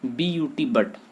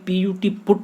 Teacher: बट ए हो रहा है यू का उच्चारण, जबकि PUT, पुट में यू का उच्चारण उ हो रहा है। तो वर्ण वही है लेकिन उसका उच्चारण बदल गया, जैसे ही शब्द परिवर्तित हुआ है।